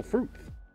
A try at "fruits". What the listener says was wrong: Why you say fruits with an L? No L in fruits. Why do you pronounce it like that?